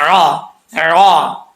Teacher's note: اکثر لوگ حمزہ پڑھ جاتے ہیں، حمزہ نہیں پڑھنا، عین پڑھنا ہے